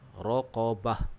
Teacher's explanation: huruf ra tu kita tebalkan, qaf juga kita tebalkan, dan waqaf dengan bunyi ha.